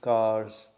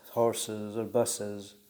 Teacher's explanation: the English plural suffix s in case of books, z in case of cars, and uz in case of horses or buses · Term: allophonic variation